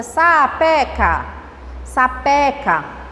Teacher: a palavra sapeca, a sílaba tônica é a penúltima.